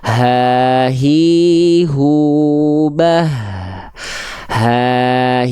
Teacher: H besar dilafalkan dari tenggorokan paling bawah nih, yang area berwarna ungu, maka karakteristik nafasnya biasa.